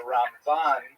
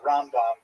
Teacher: with the accent on the last syllable and rambom the accent on the first syllable. That distinction disappears among spartan for the most part grammatically correct but otherwise confusing.